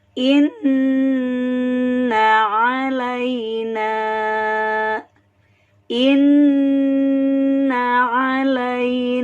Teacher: pada huruf nun sehingga dia harus dibaca dengan cara di sangat kan atau dengan cara ditekan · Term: tasydid